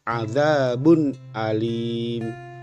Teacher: Contoh yang kedua, adzabun alim. Tanwin berupa dhammatain bertemu dengan salah satu huruf halki berupa alif atau hamzah, maka cara membacanya bunyi n pada dhammatain harus dibaca jelas, adzabun alim. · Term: izhar